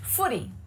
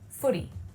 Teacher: Now, I want you to really pay attention to that flap T sound. It sounds more like a D, right? Footy.